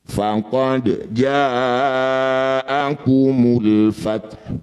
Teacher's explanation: Ketika dihentikan hak-nya tetap dibaca, sifatnya tetap keluar ya. Ada udara lembut keluar dan tidak usah dibunyikan dumahnya.